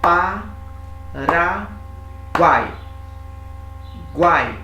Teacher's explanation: as 3 vogais em uma sílaba só. É um tritongo.